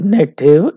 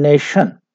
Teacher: this t sound is changed to sh sound for native and nation.